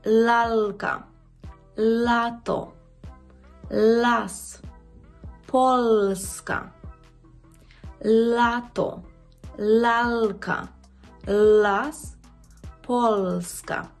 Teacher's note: У польській мові цей звук «л» він є завжди м'який. Нема твердого «л».